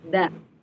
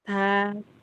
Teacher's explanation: da dia tertahan nafasnya. Da dari segi nafas ya, da. Sedangkan ta itu nafasnya ngalir. Ta. Gitu, beda dalam cara melafalkan.